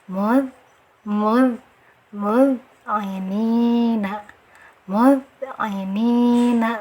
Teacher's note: Jadi pengucapan dal ini jangan ada anginnya, tapi dari segi suara dia masuk rohwah, harus dialirkan.